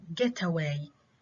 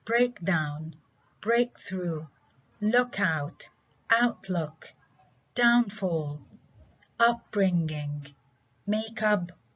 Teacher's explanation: primary stress in it falls on the first component